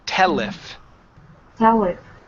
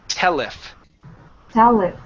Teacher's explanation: now connect the L to the word if.